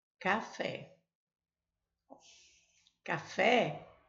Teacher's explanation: A sílaba tônica é a última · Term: oxítona